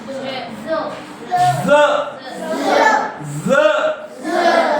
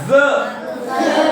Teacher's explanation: हाँ, यानी जब हमारी जो हवा निकलेगी तो जीभ को दांत के पास रख के ऐसा टकरा के निकालना है, यानी हल्की सी सा से मिलती हुई, सा भी नहीं और जा भी नहीं, दोनों के बीच में।